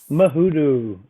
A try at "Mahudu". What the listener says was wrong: Muhudu, but the last part is pronounced with a TH instead of a D, but you don't emphasize the TH. So Mahudu.